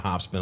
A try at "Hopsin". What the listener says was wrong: Do you keep saying hop spin? Hopsin. It sounded like you said hop spin.